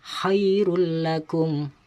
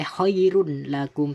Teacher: Jadi tidak boleh khairun lakum, tidak boleh, harus dimasukkan suara tanwin tersebut tapi tidak boleh berdengung